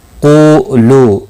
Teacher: قولو دونوں واو مدہ ہیں، ایک ایک الف کے برابر کھینچ کر پڑھیں گے۔ قاف مستعلیہ ہے، پر پڑھا جائے گا۔